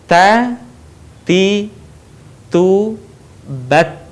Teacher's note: dengan mengalirkan udara kita perhatikan ta Jadi bukan ta tapi ta ada udara yang mengalir ketika kita melafalkan huruf tersebut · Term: huruf ta